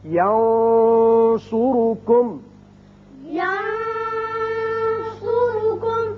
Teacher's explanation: نون پر آپ نے آواز تھوڑی سی گول کر کے موٹی سی نکالی ہے، وہ صاد کی وجہ سے، صاد حروف مستعلیہ میں سے، ینصرکم۔ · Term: اخفاء